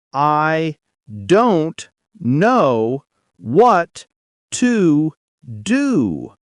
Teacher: The main stress falls on don't and know.